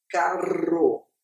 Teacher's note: em algumas variedades nem vai ser fricativa, vai ser uma vibrante múltipla. Eu vou dizer como acontece na alguns gaúchos, na variedade gaúcha, eles vão dizer carro.